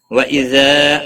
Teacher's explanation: الف مدہ ہے، ایک الف کے برابر کھینچ کر پڑھیں گے